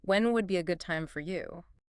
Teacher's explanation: This phrase has a special intonation. Listen to how my voice goes up on the word you at the end.